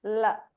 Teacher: when you make a l sound your tongue meets your upper pallet and air flows around the tongue right L it's flowing around you can feel that instead of